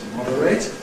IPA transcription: ˈmɒdəreɪt